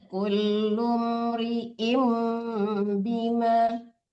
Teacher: Kulum, kan mim yang mati. Langsung disamar mim matinya, jangan dipanjangkan lunya.